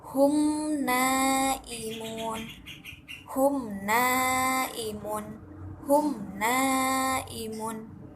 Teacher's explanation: dengan terang dan jelas dan ini tidak disertai dengan dengungan atau dibacanya tidak berdengung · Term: izhar syafawi